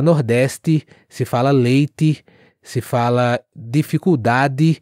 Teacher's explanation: no nordeste se fala o d com som de D mesmo e o t também com som de T mesmo